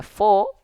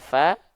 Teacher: kita enggak baca fo tapi kita baca FA Kenapa karena huruf Fa termasuk ke dalam huruf yang huruf yang tipis